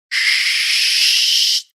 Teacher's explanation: You should hear the pitch of the sound go up. Sh. And if you hear that pitch raise, you're now making the Dutch sound.